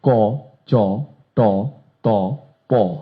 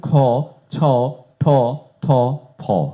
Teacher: উচ্চারণ স্থান একই, প্রথম লাইন যেখানে উচ্চারিত হচ্ছে, দ্বিতীয় লাইন ঠিক সেইখানে একইভাবে উচ্চারিত হচ্ছে। পার্থক্য শুধু একটি, প্রাণ একটু বেশি, বাতাস একটু বেশি।